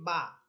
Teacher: বা হরফ বলার সময় আমার দুই ঠোঁট একসাথে লেগে মিলিত হয়ে দুই ঠোঁট থেকে উচ্চারণ হচ্ছে, এই দুই ঠোঁট হইতেছে বা হরফের মাখরাজ।